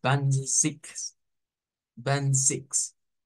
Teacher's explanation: esa Z se pronuncia con una TS